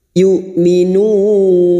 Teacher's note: hamzah sukun syiddah tertahannya suara jangan samakan dengan ain